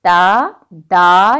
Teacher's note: ज़ुबान की नोक सामने के ऊपर के 2 जो दांत हैं सनाया उलिया जो हमने पढ़ा था उनकी जड़ पर लगती है, ठीक है, दांतों पर नहीं लगती। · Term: हरूफ़े नतइया